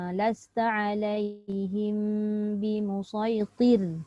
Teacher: Ta tu tetap bunyi tebal, ra nipis. Tir, dia tidak dipengaruhi.